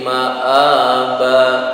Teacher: Harokat fathah tanwin dibaca waqaf, panjangnya hanya 1 alif.